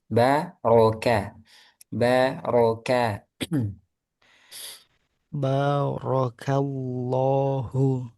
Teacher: kalau didetailkan lagi ba tipis, ro tebal, kaf tipis